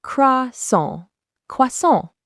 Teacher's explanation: the N is not fully pronounced. It's a nasal sound. Try saying song, but stop before you hit the G and let the sound come out through your nose.